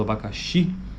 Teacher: abacaxi a vogal tônica está lá no final naquele i